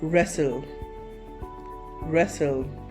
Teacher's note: It usually becomes a silent because it gets sandwiched between two other consonant sounds. And it's easier to say if you leave out that T, which requires a lot of efforts. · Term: silent T